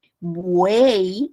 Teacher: escucho la u la e y la i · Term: triptón